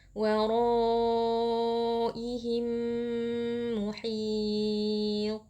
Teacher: Jadi mimnya dibaca tasydid dengan gunnah. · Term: idgham mimi